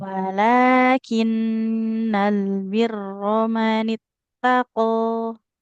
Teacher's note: Jangan birra. Huruf ro-nya nggak boleh dibaca ra